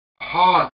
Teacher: Gimson shows the RP vowel quite far back and with the tongue body as low as possible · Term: palm vowel